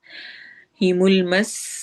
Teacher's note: सीन में सिटी वाली आवाज होगी